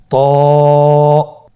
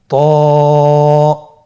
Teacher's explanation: হরফটি মোটা হরফ, এটা উচ্চারণের সময় অবশ্যই মোটা করতে হবে এবং উচ্চারণ করার সময় 1 আলিফ টেনে পড়তে হবে।